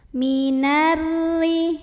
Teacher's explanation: Ada alif lam syamsiyah karena alif lamnya menghadapi huruf syamsiyah yaitu ra, maka alif lam ini tidak dibaca, dimasukkan langsung ke ra. Minarri. Ada ra yang dibaca secara tarqiq karena ra barisnya di bawah kasroh, maka bacanya tipis, nyantai, ringan, tidak perlu dinaikkan pangkal lidah.